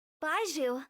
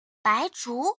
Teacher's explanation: the English one misses the rising tone on the Zhu part